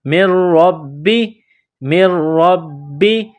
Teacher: اس میم کو را کے ساتھ پلس کریں گے، نون کو نہیں پڑھیں گے۔ میم را زیر مر، را با زبر رب، با زیر بی، مر ربی، مر ربی۔